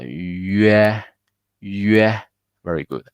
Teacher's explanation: we start with yu and then the mouth become bigger